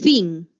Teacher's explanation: tu labio inferior y tus dientes superiores están tocando